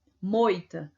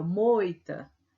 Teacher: A gente percebe que o O, ele tem um som mais forte do que o I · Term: ditongo decrescente